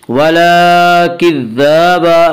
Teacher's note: ولا کذاب، ذال کے اوپر کھڑا زبر ہے، کھڑا زبر کو ایک الف کے برابر کھینچ کر پڑھیں گے